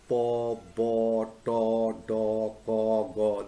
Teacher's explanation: So all these sounds, po, bo, to, do, ko, go, they are produced by some form of stopping of the air stream and then letting it go abruptly